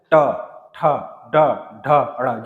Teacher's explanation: जीभ मुड़ के ऊपर टच होगा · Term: मूर्धन्य